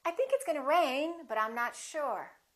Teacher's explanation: with my intonation going up, with the pitch going up, it sounds like something else is coming, like I'm not finished speaking